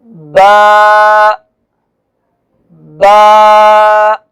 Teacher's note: با کا جو حرف ہے یہ دونوں ہونٹوں کے ملنے سے ادا ہوتا ہے۔